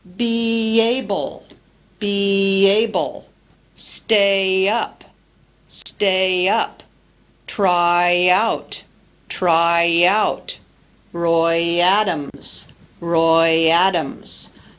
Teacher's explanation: linking with Y between one word which ends with a front vowel sound and another word which begins with a vowel sound